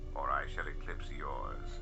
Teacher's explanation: Some serious vocal fry going on there.